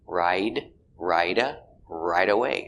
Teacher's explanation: We have a T between vowels. So it's a D sound. It's pronounced as a D sound. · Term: fast D